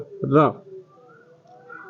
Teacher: इसमें मुख द्वार जीभ की नोक से शीघ्र ही बंद होता है और 2-3 बार खुलता है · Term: लुंठित